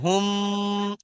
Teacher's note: মিম সাকিনের পরে যদি মিম আসে তাকে ইদগামে সাফাবি বলা হয়, আর ইদগামে সাফাবিকে একালিফ পরিমাণ গুণনা করে পড়তে হয়। তাই এখানে হুম একালিফ গুণনা হবে।